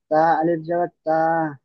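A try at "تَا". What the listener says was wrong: তা টান দিতে হবে, আলিফ মাদ্দা আছে।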